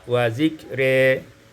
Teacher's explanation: imalatu fathatir ra, dibaca imalah fathah ra sehingga kita baca wa zikri.